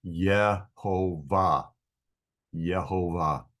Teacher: English speakers have exchanged the Hebrew Y sound in Yehovah for a J sound